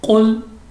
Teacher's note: قاف مستعلیہ کی ہونے کی وجہ سے ہم نے موٹا پڑھا ہے